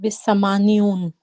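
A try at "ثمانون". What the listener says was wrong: No, there's without the ya. Samanun. Yes. Yeah, thamanun.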